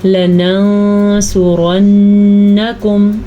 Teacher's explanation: نون ساکن کے بعد سواد آیا ہوا ہے حروف اخفا میں سے، تو ہم یہاں پہ نون کو چھپا دیں گے